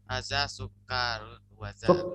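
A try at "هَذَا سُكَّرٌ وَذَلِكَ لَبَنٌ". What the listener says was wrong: Sukarun, pendek ya. Jangan sukarun, pendek, sukarun.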